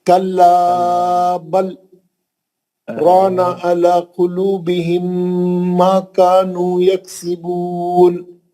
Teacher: آواز روک کے کھڑے رہ گیا. اس کے بعد اسی سانس میں آگے پڑھنا شروع کرا. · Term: سکتہ